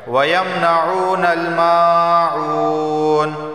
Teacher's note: میم الف زبر ما ایک الف کے برابر کھینچ کے پڑھا جائے گا، اور عین واو پیش عو اسے بھی ایک الف کے برابر کھینچ کے پڑھا جائے گا